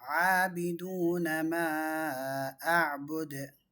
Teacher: மத்து முஃபஸ்ஸிலுக்கும் மத்து முத்தசிலுக்கும் 4 to 5 counts